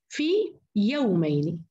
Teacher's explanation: سألفظها بمدها الطبيعي كامل قبل أن ألفظ الياء المفتوحة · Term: مد تمكين